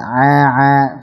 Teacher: a ditipiskan. Jadi a tipis dan jangan keluar dari al-khusyum.